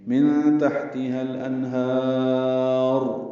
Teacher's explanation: ہا کو لمبا کریں گے، وقفاً را پر پڑھیں گے اور را ساکن ہو جائے گی تو مد عارض سکون بن گئی.